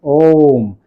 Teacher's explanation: त्रिमात्रिक, त्रिमात्रिक स्वर, इसलिए कि इसमें 3 गुना समय ज्यादा लगता है। एक मात्रिक से या ह्रस्व स्वर से 3 गुना समय ज्यादा लगता है, इसलिए त्रिमात्रिक कहते हैं। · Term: प्लुत